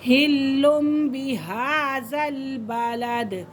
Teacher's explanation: یہاں پہ اقلاب ہو رہا ہے، چھوٹی میم ہے اور چھوٹی میم کے فوراً بعد کیا آ رہا ہے؟ با آ رہا ہے۔